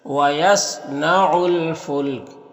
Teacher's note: صاد حروف مستعلیہ میں سے پر پڑھیں گے